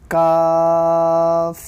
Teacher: زبان کی جڑ سے ادا ہوتا ہے